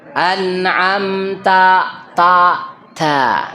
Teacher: Ta-nya itu tuh nggak ada hamas terdengar.